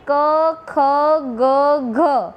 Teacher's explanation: કંઠ્ય વ્યંજનો એટલે કે જે વ્યંજનોના ઉચ્ચારણ વખતે જીભનો પાછળનો ભાગ જે કોમળ તાળવું છે, જે કંઠ છે તેને સ્પર્શે અને જે વ્યંજનનું ઉચ્ચારણ થતું હોય તેને કંઠ્ય વ્યંજનો કહેવામાં આવે છે, અથવા તો કંઠ્ય સ્પર્શ વ્યંજનો પણ કહેવામાં આવે છે.